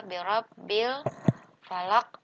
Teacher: alif lam ketemu dengan huruf fa. Nah, ini disebut dengan alif lam qamariyah. Jadi, alif lamnya sukunnya dibaca jelas ya